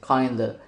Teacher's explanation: In kinda, the V in of disappears, and the D sound in kind becomes more vowel-like as it blends with the following unstressed vowel. The adjustment makes the phrase easier and quicker to pronounce. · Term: assimilation